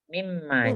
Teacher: Jadi nunnya tidak terbaca tapi dimasukkan ke Dalam huruf mim. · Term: Idgham bi gunah